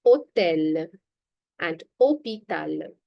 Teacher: Did you remark that I'm not pronouncing any H? I'm not saying it as hotel, as how we say it in English, but it's hotel and hôpital.